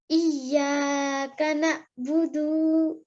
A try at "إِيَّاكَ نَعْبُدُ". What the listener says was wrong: نہ نو نو نو دو لمبا کر دیا دوبارہ.